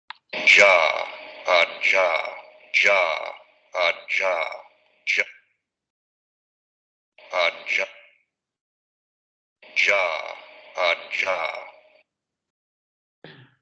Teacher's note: Y aquí vamos a ver exactamente el mismo movimiento, vean, momento oclusivo, luego momento fricativo y vibración de cuerdas vocales.